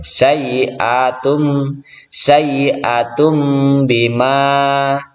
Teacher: ini dhammah tanwin bertemu dengan ba, maka suara tanwin itu diganti menjadi mim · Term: iklab